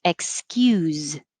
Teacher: But on line 20, the verb has a Z. So it's pretty much the same. Excuse, but has a Z at the end. Voiced S.